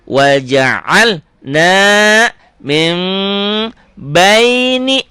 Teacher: Waja'al na min n-nya jadi m. Mim itu iklab.